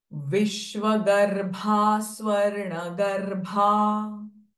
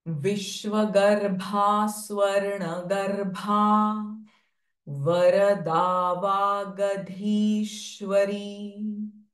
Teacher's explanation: Again, bha sound here is Mahaprana sound.